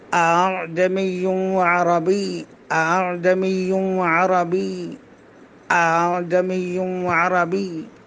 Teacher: اعجمی عربی یہ صحیح نہیں ہے روایت حفص میں، بلکہ پہلا حمزہ سخت ہوگا، دوسرا حمزہ بالکل یعنی نرمی کے ساتھ پڑھیں گے۔ اعجمی عربی، اعجمی عربی، اعجمی عربی، یعنی دوسرے حمزہ کو الف اور حمزہ کے درمیان پڑھیں گے۔ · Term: تسہیل